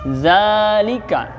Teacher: za itu namanya mad tabi'i, yaitu mad tabi'i cukup 1 ayunan ya. Jangan za panjangan.